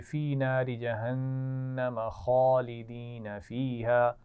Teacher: جہنم کے نون پر غنہ بھی ہوگا